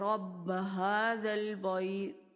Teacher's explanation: اور تا کا جو مخرج ہے وہ ہم واضح کریں گے. ایسا نہ ہو کہ یہاں پر تا ہے لیکن جب ہم اس کو پڑھیں تو وہ طا میں تبدیل ہو جائے. رَبَّ هَذَا الْبَيْتِ، موٹا ہم نے نہیں کرنا.